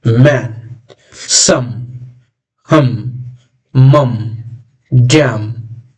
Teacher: So you see the sound we are getting from our nose. That is why these sounds are called nasal sounds.